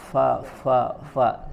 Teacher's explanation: ya bukan Pak tapi juga bukan bibir ketemu bibir Fafa ya tapi yang bertemu adalah gigi atas kita gigi seri bertemu dengan bibir bagian bawah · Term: huruf Fa